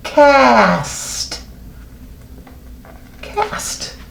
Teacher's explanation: the vowel sound after the k is ah